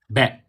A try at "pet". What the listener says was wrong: No. Pet with a P.